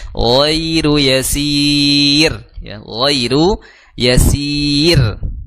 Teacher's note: Maka dihukumi sebagai ya layin ya yang lembut Maka jangan sampai dihentakan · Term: ya layyin